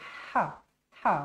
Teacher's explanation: Macam kita makan makanan pedas-pedas kan. Macam tu bunyinya. Ha. Pastikan berangin. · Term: ha nipis